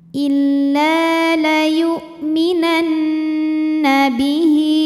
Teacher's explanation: Kemudian nunnya gunnah musyaddadah atau wajibul gunnah ya. Karena nun bertasydid. Cara bacanya dengung.